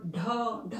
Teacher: स्वर तंत्रियों में कंपन के साथ में हकार भी उत्पन्न होता है, तो ये वाली जो लाइन, इनमें हकार उत्पन्न हो रहा है, यहाँ पे भी स्वर तंत्रियों में कंपन आ रहा है, इसलिए सघोष के अंतर्गत।